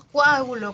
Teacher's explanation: el español peruano tiende a que sus vocales o y e se escuchen como u y I